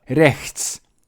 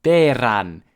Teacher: As in Lowland Scotch, a trilled R